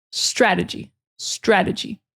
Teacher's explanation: So the emphasis really is on the first syllable.